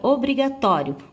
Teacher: o tó tem a sílaba tônica, ou seja, mais forte